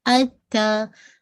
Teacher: آپ کے جو جہاں سے اوپر کی جو 2 دانت ہیں جو اپنے گمز کے ساتھ، مسوڑوں کے ساتھ جو جوڑے، بس وہی اس کا مخرج ہے